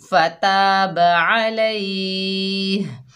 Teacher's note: जब वफ़ करेंगे फताब अलैहि तो हा वक़्फ़ की हालत में वाज़े होने चाहिए।